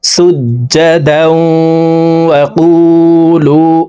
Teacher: দুই জবরওয়ালা দালটি তাসদীদওয়ালা ওয়ার সাথে গুন্নার সহিত মিলাইয়া পড়তে হবে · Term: ইদগামে বা গুন্নাহ